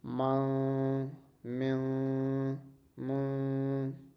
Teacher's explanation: it will be pronounced as you're kind of hiding the sound of Noon in our nose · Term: Ikhfa